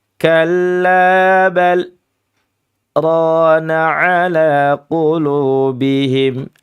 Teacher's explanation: Dia berhenti akan tetapi berhentinya tanpa bernafas. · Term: saktah